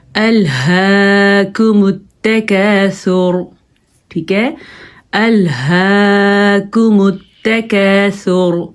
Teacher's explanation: اب آپ دیکھیں ہم نے ادھر ہا کا خیال رکھنا ہے، باریک کاف ہے، اس کو موٹا نہیں پڑھنا